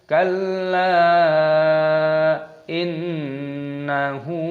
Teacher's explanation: nun tasdid gunnah berdengung